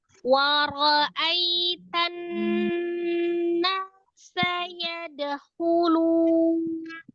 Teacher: Tan langsung ditasdidkan ke nun ya, langsung tasdid. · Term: nun tasdidnya